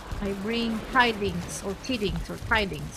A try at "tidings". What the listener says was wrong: Tidings. Don't say tiddings. Tidings. That just sounded terrible.